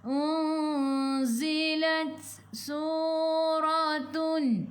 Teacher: Ada sedikit angin untuk huruf ta, sifat hurufnya hamas sikit sahaja, jangan banyak.